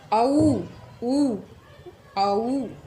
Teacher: इसमें ऊ की आवाज़ आ रही है, यानी कि होठों की शेप अलग से बनाई जा रही है, यानी कि कंठ के साथ ओष्ठ भी है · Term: कंठोष्ठ